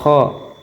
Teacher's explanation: Kho itu dari langit-langit belakang, kemudian adanya gesekan, tidak bersuara tipis. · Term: huruf Kho